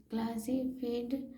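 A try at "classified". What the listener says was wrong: फेड नहीं, फायर्ड, क्लासीफायर्ड,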